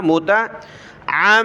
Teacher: منکم موتا، میم پیش مو تا زبر تا، موتا عمدا، عین کو گلے سے نکال کر میم کے ساتھ ملائیں گے